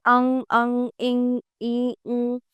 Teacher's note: अ, अंग, अः ये योग ना होने पर भी साथ रहने के कारण अयोगवाहक कहलाते हैं। अनासिक ऐसे स्वर जिनका उच्चारण नाक और मुंह दोनों से होता है